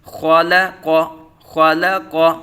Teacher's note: خا پر، قاف پر اور لام باریک